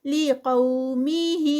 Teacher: یہاں پر مد صلۃ الکبریٰ ہے، اس لیے 4 کاؤنٹس کا یہاں پر اسٹریچ آئے گا، اور قو پہ پیچھے جو ہے وہ واؤلین ہے.